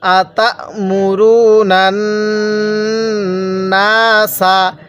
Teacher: নুনকে নুনের সাথে লাগিয়ে গুন্নাহ করব, কারণ মিমে নুনের তাসদিদ হলে সেখানে গুন্নাহ করা ওয়াজিব হয়ে যায়।